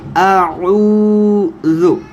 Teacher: یہ صرف یہ جو ہے واو مدہ کا حرف ہے، تو تھوڑا سا لمبا کریں گے۔